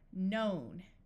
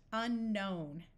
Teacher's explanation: If you have KN at the start of a root word, meaning a word without any prefixes or suffixes, the K will be silent.